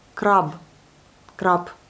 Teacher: Et là, vous avez la consonne sourde. On entend comme P alors que c'est un B.